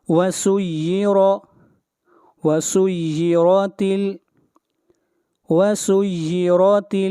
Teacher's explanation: را کو موٹا پڑھیں گے، را کے اوپر زبر ہے